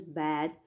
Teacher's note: For example, the sound B at the beginning of the word, such as bad, will usually be pronounced with practically no voicing